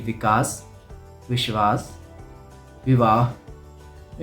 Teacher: जब हम वद क वाला वा बोलते हैं तो हमारे होंठ आपस में नहीं जुड़ते हैं